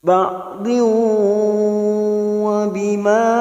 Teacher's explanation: masuk ke huruf waw dan ditahan selama 3 harokat, namanya bacaan idgham bi gunnah